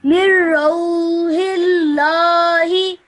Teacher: after the hey, you have two silent letters. You have the alif and then you have the lam. That's why you ignore them and you straight away join the ha to the lam.